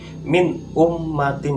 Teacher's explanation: Nah, jadi di situ nak ya, itu nun sukun bertemu hamzah. Nah, dimana cara membacanya jelas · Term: hukum bacaan idhar